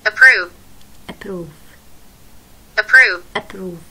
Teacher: فهاي الاي طلعت شوي خفيفة يعني، صوت زي كأنه خطف مخطوف